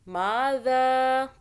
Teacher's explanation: ذال کو سافٹ پڑھنا ہے، زبان کو باہر کیجئے، پھر ادا ہو جائے گا